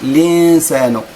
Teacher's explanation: ولكن نون مجددا، كاين النون بعدها حرف السين، إخفاء بغنة